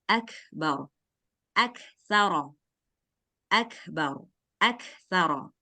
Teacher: Baca kaf sukun, kasih anginnya, langsung lanjut ke huruf setelahnya.